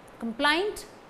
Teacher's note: Complaint, stress falls on plaint.